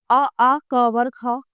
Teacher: ये कंठ से बोले जाते हैं